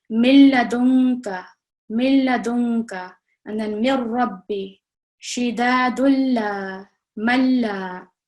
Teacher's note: we are not producing any Ghunna sound. We are not making any nasal sound at all. We are joining, so for example, in this one, we are joining the Mim directly to the Lam Mushaddad.